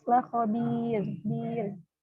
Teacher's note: ro sukun sebelumnya harokat kasroh, ini dibaca tipis